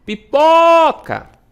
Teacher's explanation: O pó demora mais. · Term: sílaba tônica